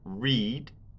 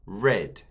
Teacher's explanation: But there is a change when read is pronounced in the past tense. The long E in the present, read, changes to a short E, read.